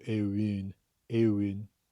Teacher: it's like the oo sound but made much further forward in your mouth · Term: the dude vowel